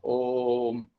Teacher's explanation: ఓను 3 మాత్రలు దీర్ఘంగా పలకాలి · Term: ప్లుతం